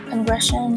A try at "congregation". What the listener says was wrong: Now again, you're skipping syllables. But are you going to skip syllables because the word's getting long? Can't.